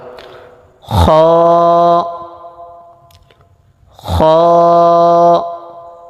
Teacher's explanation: হা, হা, খ। এই হরফটি কণ্ঠনালীর শেষ ভাগ হইতে উচ্চারিত হবে, মোটা আওয়াজ হবে, এক আলিফ পরিমাণ টান হবে।